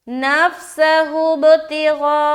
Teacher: गैन मोटा हर्फ है लिहाजा मोटा करते हुए खींचेंगे